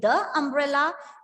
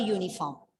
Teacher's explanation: the umbrella umbrella starts with a vowel sound whereas uniform starts with the u that is consonant sound